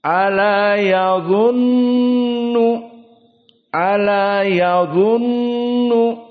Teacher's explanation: dan nun di sini musyaddadah wujubul gunnah bimiqdar harakatan, bimiqdar harakatin.